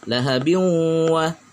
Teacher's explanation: Tanwin bertemu dengan waw. Maka apabila di sini tidak ada tasdidnya juga dibaca biwa. Tanwinnya hilang, dimasukkan ke dalam waw. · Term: Idgham bi gunnah